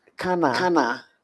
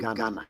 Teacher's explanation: So the K in Ghana will change to G. We call that voicing in linguistics.